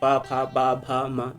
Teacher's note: पा और फा का जो उच्चारण स्थान है वह है ओष्ठ, ओष्ठ से लिया जाता है।